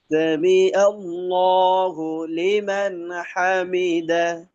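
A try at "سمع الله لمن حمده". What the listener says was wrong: আচ্ছা সামি আ, এটা আপনার ক্ষেত্রে অনেকটা হামজার মতো হয়ে গেল। সামি আ, আ না, আ। সামি আল্লাহু লিমান হামিদা।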